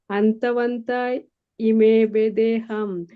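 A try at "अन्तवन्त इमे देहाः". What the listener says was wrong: ಅಲ್ಲಿ ಅಂತವಂತ ಇಮೇ ದೇಹ ಅಲ್ಲಿ ಇದು ವಿಸರ್ಗ ಇರೋದು, ಅಲ್ಲಿ ಅಮ್ಮ ಅಲ್ಲ ಇರೋದು.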